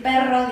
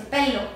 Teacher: mi lengua no está vibrando